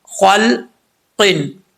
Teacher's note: قاف حروف مستعلیہ میں سے ہے، پر پڑھا جائے گا